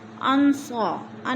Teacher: نحن انصار اللہ فآمنت طائفہ، انصا، ان میں اخفا ہو رہا ہے، نون ساکن کے بعد صاد آگے حروف اخفا میں سے تو ادھر غنہ کریں گے